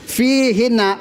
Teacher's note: Perhatikan pemirsa. Fihina, fi-nya dibaca panjang.